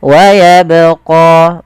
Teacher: Ini menandakan dia bacaan qalqalah, yang dimana huruf ba ini harus kita pantulkan.